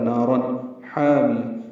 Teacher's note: نا الف مدہ ہے، 2 حرکات لمبا ہے، را پر ہے، تنوین کے بعد ہا آنے کی وجہ سے اظہار ہے